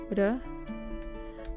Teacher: And it works like if there's one, you say it like re, like you tap the tip of your tongue on the top of your mouth